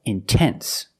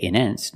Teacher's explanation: I put the stress after the NT, so I have to pronounce the T.